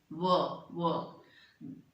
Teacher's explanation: दोनों होठ इनके सहयोग से व बोला जा रहा है इलिए अलग से इसका उरण स्थान है वकार वकार माने व